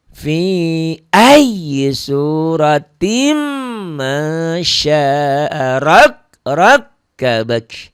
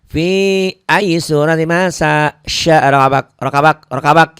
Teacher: Karena kasrotain ini ketemu mim, akibatnya bunyinya sama seperti ada tasdid ini ya. Jadi dibacanya seperti gunnah, karena mim ini bagian dari huruf gunnah. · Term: idgham bi gunnah